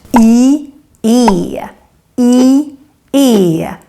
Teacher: E is what we call a front vowel because the sound kind of comes from the front of the mouth. And in order to pronounce the E the right way, at least here in Stockholm where I'm from, then you need to show your teeth.